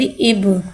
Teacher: बा के बाद साकिन है, साकिन को पहले वाले हुर्फ से मिला के पढ़ेंगे। बा के पास साकिन है, लिहाजा बा हर्फ कलकला हो रहा है। हर्फ कलकला को की में आवाज़ लौटेगी।